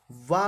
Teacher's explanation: वा का जो उच्चारण स्थान है वो आपका दंतोष्ठ होता है